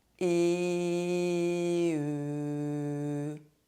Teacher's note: When we pronounce [e], our tongue is forward. To pronounce the [ø] sound, we are going to round our lips like we want to kiss someone. The mouth opening is very small. The mouth is almost closed.